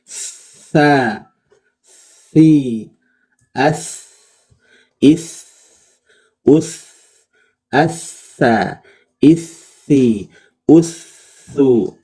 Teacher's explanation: Dari segi suaranya dia lemah, dari segi napasnya dia mengalir, ya, sehingga suaranya samar, ya. Suaranya samar karena pita suaranya terbuka. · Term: huruf lemah